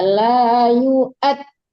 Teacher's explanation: Jangan yuwat, jangan waw yang dipakai tapi amzah.